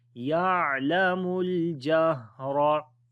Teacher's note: On the ha hums quality, continuation of our breath, jahra. Ra we read in heavy sound due to fatha